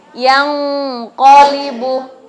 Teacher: cara bacanya disamarkan disertai dengan gunnah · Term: ikhfa